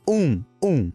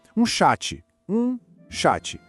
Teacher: Esse aqui exige um pouquinho de prática na pronúncia, porque é um som nasal que sai pelo nariz e que a gente não tem exatamente igual no português. Imagina que você vai falar mas com a boca quase fechada.